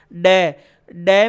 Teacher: ड में जीभ मसूड़ों से टकरा रही है, होंठ नहीं हो चाहे